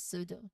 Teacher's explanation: the P at the beginning preceding an S. So the P is silent and it's pronounced as pseudo. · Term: silent P